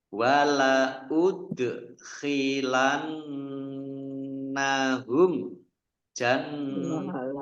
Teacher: Dal sukun bacaan kolkolah dibaca mantul ditampakkan pantulannya.